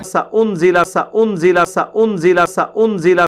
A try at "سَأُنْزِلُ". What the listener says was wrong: سأنزل نہیں پتر, سأنزل نہیں ہے, لام کے اوپر زبر ہے ہی نہیں تو ہم کیوں پڑھیں. سأنزل سأنزل, پہلے آپ ہجے سنیں, ہجے سین زبر سا, حمزہ پیش نون ان, سأن زازر زی, سأنزی لام پیش لو, سأنزلو. سأنزل نہیں پتر, سأنزل نہیں, یہ فعل مضارع ہے نا. سأنزلو فعل مضارع ہے.